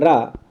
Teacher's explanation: लुंठित है, लोड़ित है, प्रकंपित व्यंजन कहलाता है रा